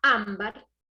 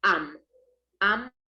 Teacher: la palabra ámbar es también una palabra grave y tiene el acento en la sílaba am